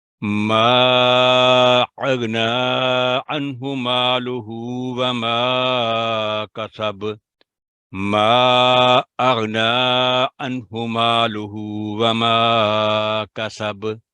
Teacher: درمیانہ کلکلا ہوا، یعنی نہ بہت ہلکا تو نہ بہت سخت